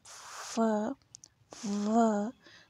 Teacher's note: फ इन व है वो है लेबियोडेंटल, ठीक है, मतलब जिसमें हमारे लिप्स और दांत इन्वॉल्व होते हैं · तो अगर आप इसको खुद प्रोड्यूस करके देखें तो आप फ, व, तो आप ऐसा फील करेंगे जैसे आपके जो दांत हैं वो आपके लोअर लिप को टच कर रहे हैं, और फ, व आपको बोलते वक्त ना आपकी जो अंदर की जो सांस है वो दांतों से बाहर निकलती हुई आपको महसूस होगी।